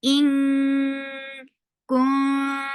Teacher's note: You're keeping the sound in your nose for a longer time. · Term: ikhfa